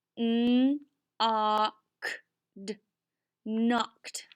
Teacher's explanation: Mark out the K because we cannot hear that K. And then our O is followed by a consonant, so it is short, makes the ah sound.